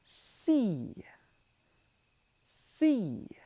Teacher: this is the unvoiced alveolar fricative